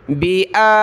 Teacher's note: इश्तरौ बिआयातिल्लाहि हमज़ा के ऊपर या के ऊपर खड़ा ज़बर है, दोनों के एक अलिफ की लिमिट में खींचेंगे और लफ्ज़ अल्लाह से पहले ता पर ज़ेर है तो लफ्ज़ अल्लाह को हमने बारीक पतला पढ़ना है, बा ज़ेर भी है।